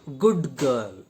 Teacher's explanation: In good girl, d is removed and g comes at its place. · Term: assimilation